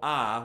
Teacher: the vowel ah would be called a low back vowel